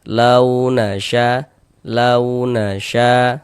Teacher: Sya dibaca panjang, ini namanya adalah mad wajib muttasil. · Ada harokat fathah, baris 1 di atas huruf harokat fathah atau tanda baca fathah. Ada waw sukun sebelumnya harokat fathah, maka dia adalah huruf lin. Maka kita baca lunak, lembut.